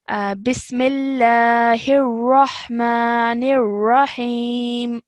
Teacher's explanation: Okay, and also these two ra's over here, they would both be thick ra's. So you make sure that you are making a thick and broad sound